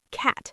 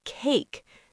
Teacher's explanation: the vowel A in the word cat makes a short, flat sound, cat. But in the word cake, the A makes a long A sound, cake. Same letter, completely different sound.